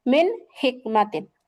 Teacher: এই যে ইজহারের হরফ, অর্থাৎ মিন দীর্ঘ করে গুণনা করা যাবে না, গুণনা ছাড়া স্পষ্ট করে পড়তে হবে, মিম নুন যে মিন, মিন হিকমাতিন।